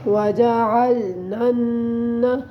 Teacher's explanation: نون مشدد ہے اور اس میں آپ نے ہمیشہ غنہ کرنا ہے۔